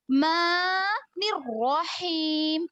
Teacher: پھر رحمان الرحیم اگر پڑھیں گے تو یہ دو نون ہو جائیں گے، تو آپ آیت کو بدل رہے ہیں، ایسا ہو جائے گا نعوذ باللہ. تو آپ ماں تک رک جائے، پھر نون کو را سے ڈائریکٹ ملا لے